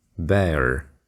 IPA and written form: beər (bear)